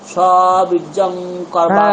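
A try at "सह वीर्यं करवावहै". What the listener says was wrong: হ্যাঁ, সাহা বীর্যম নয়, জকার নয়, জকারটা কোনটা? তেজস্বী, ওখানে যে জকারটা রয়েছে ওটা জকার, তাহলে এখানেও আপনি জকার বলবেন, ওখানেও জকার বলবেন, তো হবে না। সেই জন্য ওটাকে আমরা কি বলবো? ইয়কার, য় য় য় য় য় বীর্যম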